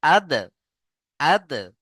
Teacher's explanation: এখানে দাল হরুফে কলকলা কলকলা করবেন প্রত্যেকে